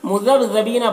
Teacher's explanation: با میں قلقلہ ہوگا اور بی یہاں پر یا مدہ ہے، ایک الف کے برابر کھینچیں گے